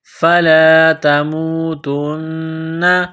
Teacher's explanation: نون مشدد ہے، غنہ کریں گے، آواز ناک میں چھپائیں گے